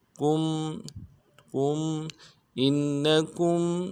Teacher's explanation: ساتھ ملانا ہے، نون کے اوپر تشدید ہے، زور دیں گے، ان کاف کو میم ساکن کے ساتھ ملانا ہے، میم ساکن میں اظہار کریں گے